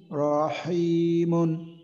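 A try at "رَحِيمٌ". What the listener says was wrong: রতে টান না হয়, রতে টান না হয় আবার। রতে টান না হয়, রহিমুন এমন না হয়, রহি, রহিমুন।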